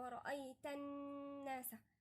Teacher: لأن احنا برضو نكتبها دي في الكراسة، النون إذا أتى النون عليها شدة، نون وعليها شدة، أو ميم وعليها شدة سمي حرف غنة مشدد ونغن فيها مقدار حركتين